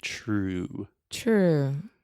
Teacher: really want to round your lips inside true true yeah perfect so true that is like a CH sound honestly in English